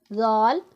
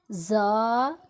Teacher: زا حروف صفیریہ ہے، اس میں ہم سیٹی کی آواز نکالیں گے